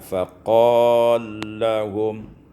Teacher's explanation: Kemudian pada ayat 243 pada faqala lahum, iaitu idghamul lam fil lam, diidghamkan lam pada lam, sehingga kita baca faqallahum.